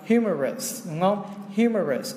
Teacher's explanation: cái trọng âm nó hơi củ chuối, nó sẽ rơi vào cái âm đầu tiên, tức là cách quãng một chút, cái âm us cách âm rồi đến âm tiếp theo phía trước.